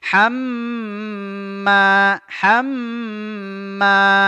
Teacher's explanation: qasirah namanya wamroatuhuu dua harakat hamma hamma mim tasdid tajibul gunah dia wajib didengungkan ditahan dua harakat